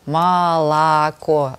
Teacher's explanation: я делала ударение, как все южане, uh-huh. на каждый слог.